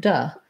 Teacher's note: The T becomes more of a flap, so it's almost more like a D, and the oo becomes a schwa, sounds like duh. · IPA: də